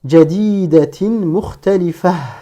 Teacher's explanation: Un ta marbota se prononce comme un ha portant un soukoun si on marque l'arrêt à son niveau. En revanche, comme ici, entre le mot jadidatin et mukhtalifatin, si je ne marque pas la pause à ce niveau-là, donc je dois dire jadidatin mukhtalifah.